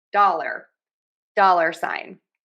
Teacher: We're stressing syllable number one there.